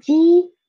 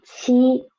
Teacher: And ji, qi, ji, softer air, and qi, stronger air. That's the differences between unaspirated and aspirated initials.